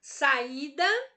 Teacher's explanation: a sílaba mais forte da minha palavra aí saída é o I, certo? Percebam que o I está sozinho na sílaba.